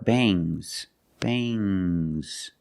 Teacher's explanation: have S after NG it makes the nasal sound M but it also makes a little G sound but not a hard strong G these are bangs bangs there's a little G but it's not